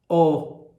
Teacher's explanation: Olha só como fica arredondado no som O. Língua com altura média, lábios menos arredondados e projetados. O grau de projeção dos lábios para frente, como também o grau de abertura da boca, aumentam a caixa de ressonância, o que influi no timbre dos sons.